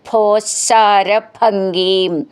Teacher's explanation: ഭോ എന്നുള്ള അക്ഷരം നന്നായിട്ട് ഊന്നി പറയണം ശന്ന് രണ്ട് ശ മെല്ലെന്ന് ഊന്നണം ഭംഗീം എന്നുള്ളതിന്റെ ഭ എന്നും നന്നായിട്ട് ഊന്നി